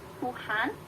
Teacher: ketika dia diapit oleh vokal Tuhan, H-nya jadi sedikit lebih ringan. Dan kadang-kadang bunyi H itu tidak diucapkan.